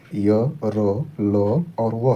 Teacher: इनका उच्चारण जीभ, तालु, दांत और ओठों के परस्पर सटने से होता है, किंतु कहीं भी पूर्ण स्पर्श नहीं होता। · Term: अर्धस्वर